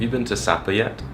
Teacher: He had a very steady rise.